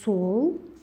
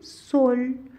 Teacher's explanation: Бул жумшак үнсүздү жасаш үчүн тилибизди тиштин артынан бир аз таңдайга жогору көтөрөт экенбиз. Мисалы, сол деген сөздү айтканда, тил тиштин аркасына тийип атса, соль дегенде Л тыбышын айтканда, тилди дагы таңдайды көздөй кичине жогору көтөрүп жасайт экенбиз. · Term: жумшак үнсүздөр